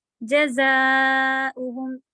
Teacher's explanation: زا buzzing sound, او کی آواز آپ کٹ کر کے دوبارہ شروع کریں گی